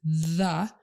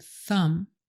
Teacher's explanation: her voice will be on for the voiced TH, as in the, versus the unvoiced TH, as in thumb. Sometimes the voiced TH might tickle a bit, so you can tell them that, because it kind of makes the upper lip vibrate.